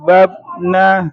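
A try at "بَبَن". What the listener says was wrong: Babena. Jangan tekan aja babna, tapi babe. Babena.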